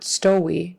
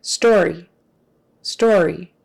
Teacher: If you don't get the R in there, it'll almost turn into a W, which we don't want.